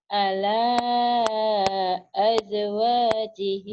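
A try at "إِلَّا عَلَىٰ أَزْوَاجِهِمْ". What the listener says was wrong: bukan jim az zai zai az azwanya panjang illa illa illa ala azwajihim au ma malakat aymanuhum sampai situ dulu kalau napasnya cukup ya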